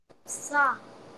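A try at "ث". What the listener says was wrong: Make it more softer, man. Sa. Okay, where do we touch our tongue in sa? Yeah, upper tooth edge.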